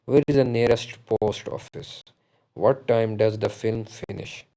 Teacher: final syllable, the pitch of our voice falls. So that is falling intonation.